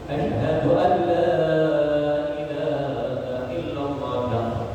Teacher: asyhadu alla ini termasuk bila guna, jadi tidak boleh didengungkan, harus dilangsung asyhadu alla ilaha illallah.